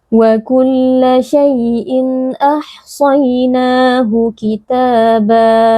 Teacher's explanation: ada ya sukun yang didahului oleh fathah, menerapkan lin. Ya sukun dibaca dengan lembut.